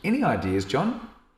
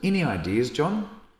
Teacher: with this like rising intonation we can express to others in the meeting that it's a question so any ideas John and John will know that you're asking